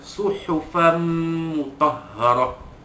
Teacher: Suhufam mutahharah, fa dua di atas fan bertemu dengan huruf mim, hukumnya juga seperti rasulum tadi ya, idgham ma'al gunnah, ya, memasukkan tanwin ke dalam bunyi tanwin ke dalam huruf mim dengan dengung, idgham ma'al gunnah.